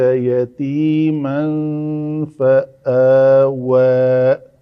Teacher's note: یہاں پہ تنوین کے بعد فا ہے، تنوین کے بعد تو یہاں پہ اخفا کیا